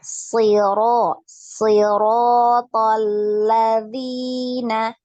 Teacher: hati-hati ya, jangan banyak. Nah, tadi banyak getarannya.